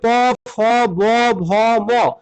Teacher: সবই আমাদের ঠোঁটে বাড়ি খেয়ে তারপর আমরা সেই বর্ণগুলোকে উচ্চারণ করতে পারছি। এই জন্য এদের ওষ্ঠবর্ণ বলা হচ্ছে।